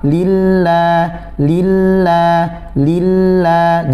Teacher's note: Jangan sampai fathahnya mengikuti kasrah sebelumnya.